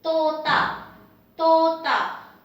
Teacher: Tota, dental, soft, don't aspirate. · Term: dental T